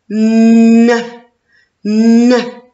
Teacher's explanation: mes lèvres sont ouvertes et la langue est contre les dents du haut.